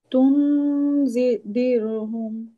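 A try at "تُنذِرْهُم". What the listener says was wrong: তুম, নুনের উচ্চারণ করবো না, হ্যাঁ, একটা গুম এরকম হবে, হ্যাঁ। তুম দের হুম, এটা গুন্নাতে সময় দিতে হবে, দেখো 2 কাউন্ট গুন্না। তাহলে তুম দের হুম।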